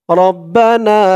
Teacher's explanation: না এক আলিফ টান, জবরের পরে খালি আলিফ